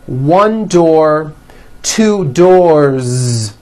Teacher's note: one door two doors with a voiced z ending